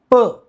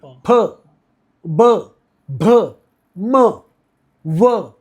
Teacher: अब के जो वर्ण, वो सब ओठों की हलचल से हो जाते हैं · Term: ओष्ठ स्वर